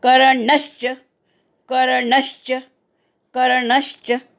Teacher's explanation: कर्णच्या नवर आघात येईल कारण पुढे पुन्हा च आला आहे